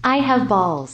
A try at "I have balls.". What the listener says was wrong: 여기에 뭔가 들어가 있는 것처럼 발음했어요. I have a balls 하면 절대로 안 되겠죠.